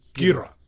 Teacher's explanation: how he's pronounced in the show era, the O is very, very glided. It's Ghidorah. · There's definitely kind of a third syllable there in the middle. I mean, it's a D and then a flapped R. Like, you got to put something between it.